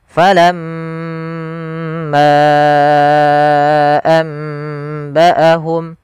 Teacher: Ghunah. Yaitu membaca dengan mengalirkannya ke rongga hidung kita atau membunyikan dari rongga hidung kita.